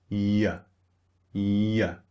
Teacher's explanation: Use the back of your tongue, push it up in your mouth, Y, and then slightly lower your jaw on the second part of the sound. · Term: the Y sound